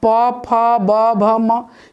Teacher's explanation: ये ओष्ठ से आता है, ओठ से उच्चारण। चूंकि बिना होठ सटाए हम लोग पापा का उच्चारण या प्रोनाउंस नहीं कर सकते हैं।